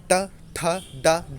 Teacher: ठ ड ढ तो मूर्धा वाली ध्वनि उत्पन्न होती है मतलब जीभ जो है वो ऊपरी छत में टकरा टकराकर क्या होती है पूरी घूम जाती है उसे मूर्धन्य बोलते हैं